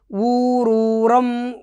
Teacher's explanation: ఊ దీర్ఘం కాబట్టి గురువు, రూ దీర్ఘం కాబట్టి గురువు